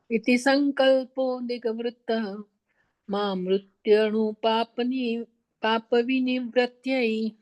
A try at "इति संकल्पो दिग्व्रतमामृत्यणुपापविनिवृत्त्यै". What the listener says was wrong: हाँ, पाप नी तुरंत मत बोलो, पाप का वी है ना, पाप विनिवृत्त्यै, पर सही बोला, अच्छा बोला।